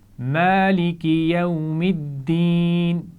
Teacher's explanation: یوم واو ساکن ہے اور اس سے پہلے زبر ہے تو یہ واو لین ہے، نرمی سے پڑھا جائے گا